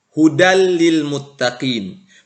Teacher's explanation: cukup dimasukkan atau dileburkan ke huruf ra atau lam, tapi tidak diiringi dengan gunnah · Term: idgham bila gunnah